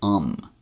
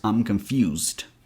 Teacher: we're going to take I'm and reduce that I sound to a schwa sound. Uh, so I'm becomes um, so it becomes I'm confused.